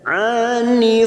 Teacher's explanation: Ain fathah berdiri dua harakat kita panjangkan